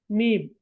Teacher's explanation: அப்பத்து என்றால் உதடு எனவே இப்ப நாங்க மீமை உச்சரிக்க மீம் உச்சரிச்சு பாருங்க நீங்க மீம் என்று சொல்லி பாருங்க இரண்டு உதடுகளும் என்ன செய்யும் ஒட்டிக்கொள்ளும்